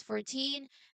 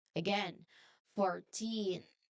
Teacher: Well, this is much easier to start because it begins with the simple word four, but the rule is the same. So we must put the stress on the last part. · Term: teens stress